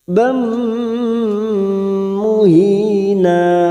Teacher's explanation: Bam, fathatain bertemu mim. Idgham bi gunnah masuk pada huruf mim dan ditahan selama 3 harakat.